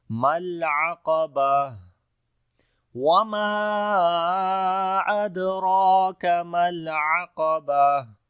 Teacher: درمیان والے حصے سے پڑھیں گے، قاف کو موٹا پڑھیں گے، تا کے اوپر جب رکیں گے تو ہا آ جائے گی اور ہمس کریں گے، سانس جاری ہوگا ، اب کمزوری آئے گی اس کے اندر، ما العقبہ، وما · عین کو گلے کے درمیان والے حصے سے پڑھیں گے